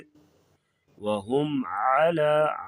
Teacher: عین کی آواز گلے سے نکالیں گے